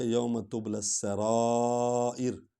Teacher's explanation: لام کو سین میں ملائیں گے کیونکہ الف لام پر جزم ہے، سین پر شد ہے، تو سیدھے ہم شد والے حرف پر آئیں گے، لام اور سین کو اکٹھے پڑھیں گے۔